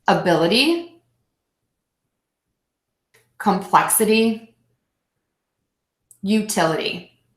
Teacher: so syllable two will be stressed